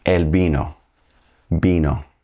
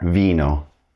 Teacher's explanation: It's going to be pronounced like a very soft B like in the name Ben. In fact, the B and V in Spanish are going to have the same pronunciation.